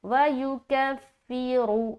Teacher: یکفرو، یکفرو، رو رو ایسا، وَیُکَفِّرُ، اور یہاں پر کہیں پر بھی کھینچنا نہیں ہے، بس اس میں خاص یہ خیال رکھے کہ را موٹا ادا ہو، اور جہاں جہاں پیش اور زیر ہے وہاں پر مجہول نہ ہو آواز، بلکہ معروف رہے